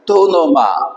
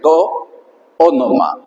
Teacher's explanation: indica la crasis o fusión de dos vocales, es decir, hay dos vocales que se transforman en una final y otra inicial de dos palabras que se unen como si fuera una sola.